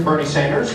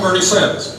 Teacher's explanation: the New York City accent is historically non-rhotic meaning R's often get dropped except before vowels